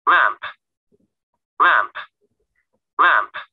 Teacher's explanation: Âm tiết đầu tiên bắt đầu bằng letter L, sau các bạn cong lưỡi và lưỡi của mình chạm lên hàm trên